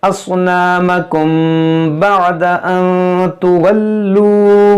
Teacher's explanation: اصنامکم یہاں پر اخفاء شفوی ہوگا